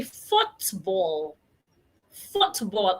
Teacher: A lot of people pronounce it as "foo ball". They throw away the T and the L at the end.